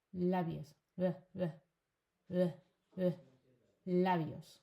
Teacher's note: So again, it's a B sound, but whenever it goes between vowels, it's a V sound. · We don't distinguish between the B sound and the V sound. They're the same for us.